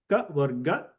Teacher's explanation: you can see that the contact point or point of modulation is throat